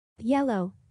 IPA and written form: ˈjel.əʊ (Yellow)